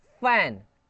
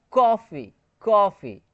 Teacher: देखिए फ एफ से आता है फ तो फ हो गया। फ जैसे friction based not aspirated. Friction based है।